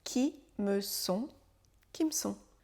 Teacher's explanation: Et on enchaîne tous les mots très rapidement. Comme si c'était un seul mot.